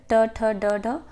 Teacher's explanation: हमारी जो जीवा है उसका जो मूर्धन्य यानी कि आगे का भाग है वो हमारी तालु में टच होता है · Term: मूर्धन्य ध्वनियाँ